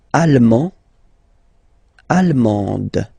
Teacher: you don't pronounce the final D, but then you pronounce it here for the feminine form